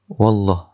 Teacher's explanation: Lafzul jalalah itu juga dibaca tebal, mufakhamah ataupun tafkhim. Sebab apa? Sebab waw itu berbaris fathah.